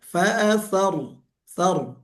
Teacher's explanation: huruf ra ketika dia mati didahului oleh huruf harakat fathah, jadi ra-nya tebal